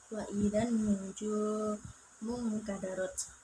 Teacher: Dan yang ketiga yaitu ikfa, nun sukun bertemu kaf dibaca mendengung